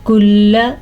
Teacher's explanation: لام کو لمبا نہیں کرنا، لام پہ رکنا بھی نہیں ہے.